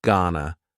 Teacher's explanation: It's another informal contraction, just like wanna. Gonna is generally pronounced with the schwa, G-N-A, gonna.